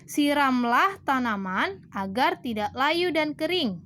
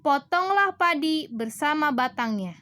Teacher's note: intonasinya harus tinggi atau naik